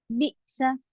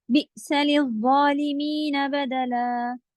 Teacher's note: بئ میں حمزہ کی آواز کٹ ہوگی